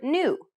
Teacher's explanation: it sounds a bit like you're trying to say an n and a y sound at the same time try to think of it as pronouncing an english n but